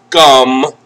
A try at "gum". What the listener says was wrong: Don't forget the last letter. You have to close your mouth.